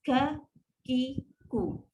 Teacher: Dia ada sifat hams, udara yang terlepas.